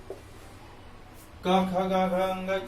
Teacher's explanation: क वर्ग कंठ से बोला जाता है